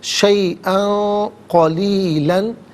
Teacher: شیئن میں حمزہ پر 2 زبر کی تنوین ہے، اس کے بعد قاف حرف اخفا ہے تو تنوین کو یہاں اخفا کے ساتھ پڑھا جائے گا